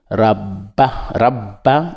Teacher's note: on appuie sur ba parce qu'il y a shida. Shida veut dire on appuie dessus.